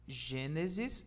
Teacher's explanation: em Gênesis a sílaba tônica está na antepenúltima sílaba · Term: proparoxítona